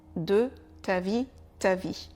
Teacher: le E de de est bien sûr oublié